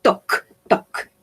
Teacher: no vamos a pronunciar la L, ¿sí? No la vamos a pronunciar, es como si no existiera. Y esta A la vamos a pronunciar como una O, ¿sí? Como una O.